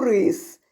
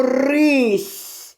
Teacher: І з твердого с утворилось м'яке